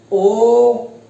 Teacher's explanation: कंठोष्ठ, कंठ और होष्ठ होठों से, ओ कंठ से भी आवाज आ रही है और होठ भी गोल हो रहे हैं